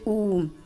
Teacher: जब आप खुद उच्चारण करके देखिए तो जैसे आपके होठ ऐसे हो गया, जैसे गोल ये चाप लगा दी हो, ऐसे गोल हो जाएंगे वर्त की तरह, जैसे ऊ, बड़ा ओ आऊ, बिल्कुल आपके होठ वर्त की तरह गोल हो रहे हैं। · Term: वर्ताकार